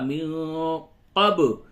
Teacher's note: با ساکن ہے یہاں پہ قلقلہ ہوگا